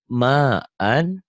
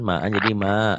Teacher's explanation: Kemudian ini ma'an jika dihentikan ma'an jadi ma dua fathah dibaca satu jika dihentikan ini namanya mad iwad. Dua fathah dibaca satu kalau berhenti jadi panjang